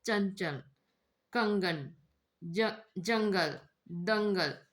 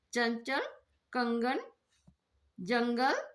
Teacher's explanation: अनुस्वार इसका उच्चारण नाक से होता है